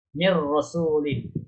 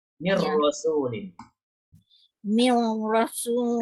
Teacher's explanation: Kita terus mim dengan ra saya seolah-olah nun ni tak ada pun. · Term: idgham kamil